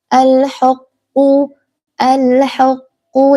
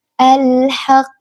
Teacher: jangan sampai h-nya itu dibaca tebal. Jangan alhuquqqu alhuqu jangan sampai tebal duluan karena keikut huruf qof tapi dibaca tipis alhaq.